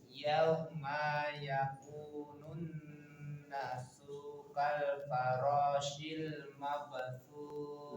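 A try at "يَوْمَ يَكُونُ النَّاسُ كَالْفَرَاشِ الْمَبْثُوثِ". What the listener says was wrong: Nanya panjang 2 harokat. Yakunun nasu. Coba lagi.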